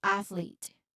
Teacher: Pay attention to that subtle break or slight separation between the TH and L.